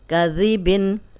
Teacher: اس میں ذال جو ہے نرم پڑھیں گے اور سیٹی کی آواز نہیں آئے گی